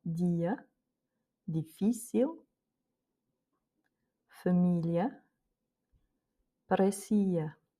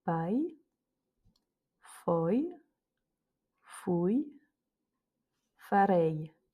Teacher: on entend que c'est pas i, c'est plutôt y. Comme si on avait en français deux LE en fait à la fin.